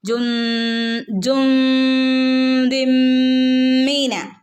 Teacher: ജുൻദി എന്ന് പറയരുത് മിൻ എന്നും പറയരുത് ജുൻദി അല്ലേ ജുൻദിം മീന ഇവിടെ തൻവീനിന് ശേഷം മീം വന്നാൽ എന്ത് ചെയ്യും നമ്മൾ മണിച്ചു കൂട്ടി ചേർത്ത് ഓതണം ട്ടോ